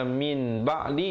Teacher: Asalnya min ba'di, jadi mim, nun mati ditukarkan bunyi nun kepada bunyi mim yang nipis, 2 harakat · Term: hukum iqlab